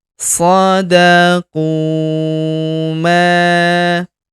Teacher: Huruf ma kita panjangkan dua harakat karena terdapat alif di depannya.